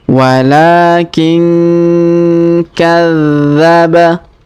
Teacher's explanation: Huruf nun sukun bertemu ka, maka kita dengungkan dan kita samarkan.